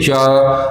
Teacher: जब च बोलते हैं तो जीभ ऊपर तालु में जाके स्पर्श करती है